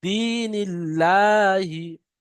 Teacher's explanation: আল্লাহ শব্দের আগে নুনের নিচে জের এসছে, সেজন্য আল্লাহ শব্দকে বারিক করে পড়তে হবে, অর্থাৎ লা পড়তে হবে।